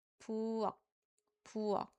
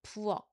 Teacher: we don't make any aspirating k sound at the back. So, although the romanization of this would be like this, but we don't make this sound. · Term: stopping sound